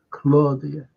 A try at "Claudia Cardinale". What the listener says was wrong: it's not Claudia it's cloudia that's how you pronounce the Italian